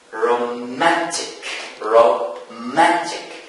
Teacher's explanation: The stress falls on the second syllable from the end. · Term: penultimate